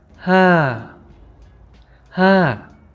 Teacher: You start from a high tone and come down.